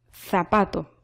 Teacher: La Z, el sonido de la Z, que usted tiene que colocar la lengua entre los dientes. Es por eso que este sonido de la Z es un sonido interdental.